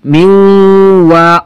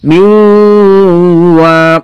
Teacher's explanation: ওয়াটা লম্বা হবে, গুণা হবে, লম্বাও হবে